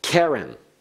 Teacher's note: notice the accent on the first syllable